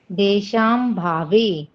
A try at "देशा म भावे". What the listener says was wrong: हाँ, और देशाम भावे को अगर आप पढ़ रहे हो तो थोड़ा सा यहाँ पे गलत होता हो सकता है। हो सकता है क्या हो ही रहा है, तो आपको देशाम नहीं पढ़ना है, देशा म भावे। मत पढ़ो, देशा मत पढ़ो, देशा म भावे। इसको देशाम पढ़ोगे ना तो देशाम में तो पूरा ही अलग हो जा रहा है, एसाम होता है, फिर अभावे हो सकता है, ऐसा पढ़ सकते हो आप इसको।